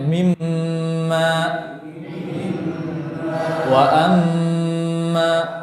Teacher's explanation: Nah, gunnah makhrajnya dari khayshum. · Gunnah. Ya, jadi kita alirkan nafas kita di hidung disertai dengan suara.